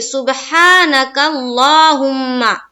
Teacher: یعنی کہ کاف کو ہم لام سے ملائیں گے، ہے نا؟ یہ جو حمزہ ہے وہ حذف ہو جائے گا